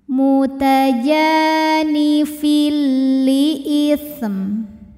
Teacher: Lalu berikutnya ada hukum idgham bila gunnah karena ada tanwin kasrah menghadapi huruf lam. Maka tanwinnya dileburkan atau dimasukkan ke lam, tidak disertai dengung. Jadi ini cukup kita tekan saja.